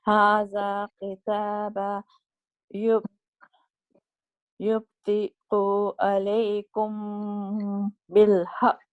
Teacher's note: you applied the ikhfa of the Meem Sakina because it's followed by the letter Ba correctly, and you stretch the sound for 2 counts and nasalized.